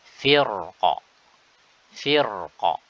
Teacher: firqin firqin cara kedua dengan menipiskannya firkin firqin ini ketika wasal Adapun ketika waqaf maka RO di sini wajib dibaca tebal